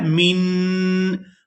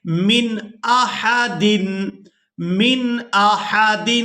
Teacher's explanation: اس کی وجہ یہ ہے کہ نون ساکن کے فوراً بعد حروف حلقی میں سے یہاں پر حمزہ ہے، تو یہاں نون پر اظہار کریں گے، یعنی نون کی آواز کو ظاہر کر کے ادا کریں گے